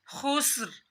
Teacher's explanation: سین کی سیٹی نکالنی ہے